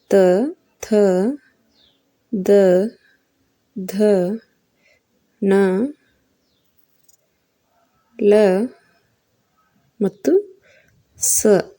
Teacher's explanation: ದಂತ್ಯ ಅಕ್ಷರಗಳು ಇವು ಹಲ್ಲುಗಳ ಸಹಾಯದಿಂದ ಹುಟ್ಟುತ್ತಾವ